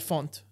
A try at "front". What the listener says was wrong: It's called front, not font. You said font.